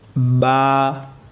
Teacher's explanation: जैसे बा, और मुंह को खोलेंगे, बा मुंह को खोल कर मतलब कि अदा करना इसको, बा दब कर, बा दबाना भी नहीं आवाज़ को, हमें बिल्कुल खोल के आवाज़ को मतलब कि निकालना है, ठीक है। जैसे बा अदा होता है दोनों होठों के तर हिस्से से, तो ये ऊपर के होठे, ये नीचे के होठे, इनका जो तर हिस्सा है यानी गीला, जो मतलब कि आमतौर पर गीला रहता है ज़बान से या थूक से, तो उसे हमें उन दोनों होठों को मिलाना है और उनको खोलना है, बा, ठीक है।